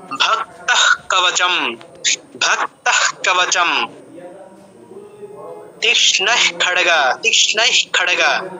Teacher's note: বিসর্গের পর ক খ প ফ থাকলে উচ্চারণটা অর্ধ হয়ের মতো হয়।